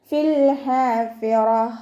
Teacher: ലാമ് കൽക്കലയുടെ ലെറ്ററിലാത്തത് കൊണ്ട് ഹാഫ് സുക്കൂന് കൊടുക്കുക. ഹാഇൻ്റെ മഖ്റജ് വസത്തുൽ ഹൽക്കാണ്, ഹംസയായി പോവാതെ ശ്രദ്ധിക്കണേ